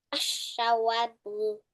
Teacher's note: we skip the lam and pronounce the third letter of the word or the following letter with a shadda